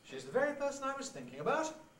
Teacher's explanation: high head also combines with the high rise to give you the so-called high bounce